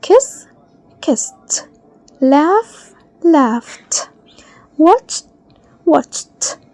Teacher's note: we'll pronounce the ed as t.